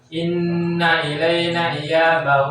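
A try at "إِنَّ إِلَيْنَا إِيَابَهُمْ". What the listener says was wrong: Panjang nanya 5 harokat.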